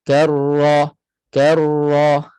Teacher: Dia sudah masuk dah pada ra yang kedua. Jadi, getarannya sama. Takrirnya sama sahaja. Satu kali getaran juga. Walaupun dia bersabdu ataupun tidak. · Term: sifat takrir